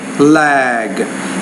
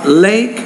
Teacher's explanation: When the G or any voiced consonants at the end of a word, the vowel before is a little bit longer than when a voiceless consonant like the K is at the end of a word, then the vowel is shorter.